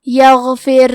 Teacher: کلمت یغفر میں غین ہے، غین کی ادائیگی حلق کے اوپر والے حصے سے ہے، غین حروف تفخیم میں سے ہے تو ہم یہ حرف کو موٹی آواز میں پڑھیں گے. آخری میں حرف الراء پہ جزم ہے، یہاں را کا حکم ہے ترقیق تو ہمیں حرف الراء کو پتلی آواز میں پڑھنا ہے.